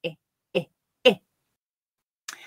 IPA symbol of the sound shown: ɪ